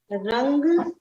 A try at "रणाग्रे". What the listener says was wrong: रन रन रणाग्रे, रंग नहीं है, रन रणाग्रे, रन रणा, नमोकार वाला न, नड़ा ण, अड़, अड़ का उच्चारण है इसमें, ण, ण।